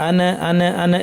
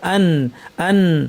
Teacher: এখানে দেখেন সিরাতাল্লাযীনা আনআমতা, এখানে একটা কমন ভুল হচ্ছে, অনেকে নুন এবং মিমে আওয়াজটা বাউন্স করে, কলকলার মতো শোনা যায়। আনআমতা এরকম শোনা যায়, আনা আনা আনা এরকম না, আন আন, জিব্বা যেন ধাক্কা খেয়ে সরে না আসে, সরাসরি আইনে চলে যাব, আন শেষ করে আতে চলে যাব।